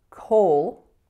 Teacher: in the second part of the word we have coal so it's an O going right into a dark L